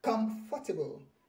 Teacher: the stress is on come